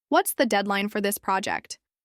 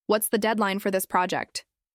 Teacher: with a strong, confident falling tone. You sound like someone who's organized and focused. · But if you say, "What's the deadline for this project?" with a rising tone, it might sound like you're unsure or maybe not even involved in the project.